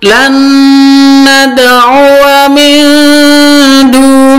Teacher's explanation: nun sukun bertemu dengan dal ikhfa samar, min du, antara nun sukun dan dal tidak ketahuan, samar.